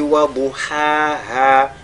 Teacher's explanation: Et la lettre dod, il est avec at-tafkhim.